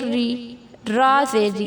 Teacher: را زیر ری، اس کو باریک پڑھیں گے